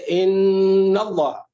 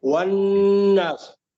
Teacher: نون پہ شدہ آ گیا، 2 سیکنڈ کے لیے آواز کو آپ نے ناک میں روکا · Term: غنہ